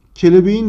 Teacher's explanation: Kelebeğin derken bakın arkadaşlar K sesi yumuşayarak yumuşak Y'ye dönüşüyor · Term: ünsüz değişimi